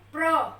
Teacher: अब यहाँ पर जो है ये प्र, र के ऊपर पूरा जोर आ रहा है, जो इससे पहले वाला प के ऊपर जो आ रहा है, प के ऊपर हम कम जोर दे रहे हैं और र के ऊपर पूरा जोर दे रहे हैं, यानी कि यहाँ पे प जो है वो आधा अक्षर है और र पूरा है।